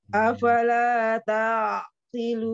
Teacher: Jangan dinaikkan tanya, jangan tak.